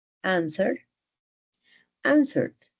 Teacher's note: Casi que la S desaparece un poco, answered.